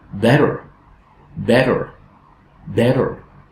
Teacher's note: the first vowel is strong while the second one is unstressed